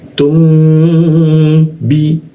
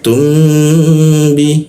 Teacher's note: Kalau huruf mim itu kita gumamkan. Gumamkan ke huruf mim. Nah kita baca huruf mim dua ketukan. Setelah itu baru masuk ke ba-nya.